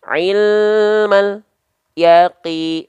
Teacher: memutus suara lamnya Kenapa huruf lam tidak boleh terputus suaranya karena huruf lam punya sifat yang namanya tawassut teman-teman tawasut itu artinya Dia sedikit mengalir suaranya jadi antara AL dengan ya Enggak boleh ada putus ilmal tuh · jangan sampai melafalkan lam sukun itu terputus suara kita ya jangan sampai putus suara kita atau terjeda